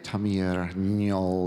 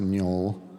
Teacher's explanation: that's a strengthening of the g sound to a nasal. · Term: nasalization